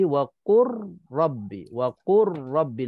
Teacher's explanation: Sebab ra tu ada sabdu, jadi lam tu masuk dalam ra.